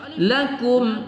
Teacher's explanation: anasaluu kita baca satu Alif rasuu kita baca satu Alif lakum mim sukun bertemu Kaf kita baca tidak berdengung pada izhar syafawi